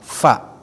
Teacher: fa athar, ya, fa-nya huruf asyafatain, ya. Jadi fa gigi atas bertemu dengan bibir bawah